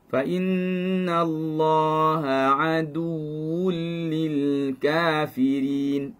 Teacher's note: Lam lafzul jalalah kita baca tebal. Kenapa? Kerana sebelum ni ada fathah.